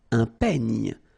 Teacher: Final E, you don't insist on it. It's ny, the last sound. And then this E combination will give you this E, open E.